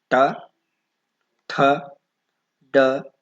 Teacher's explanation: ಅಂತಕಂತದ್ದು ಮತ್ತೆ ಈಗ ಮೂರನೇ ಭಾಗ ಮೂರ್ಧನ್ಯ ಅಕ್ಷರಗಳು ಸೋ ಮೂರ್ಧ ಭಾಗದಲ್ಲಿ ಅಂದ್ರೆ ನಾಲಿಗೆಯನ್ನ ಹಿಂದೆ ಚಾಚಿ ಬಾಯಿಯ ಮೇಲ್ಭಾಗವನ್ನು ಸ್ಪರ್ಶಿಸಿದಾಗ ಉಚ್ಚಾರಗೊಳ್ಳುತ್ತವೆ